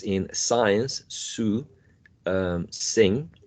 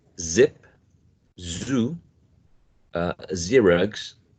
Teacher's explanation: we have two sounds that are quite similar in terms of place of articulation. Both of them are alveolars, right? Both of them are fricative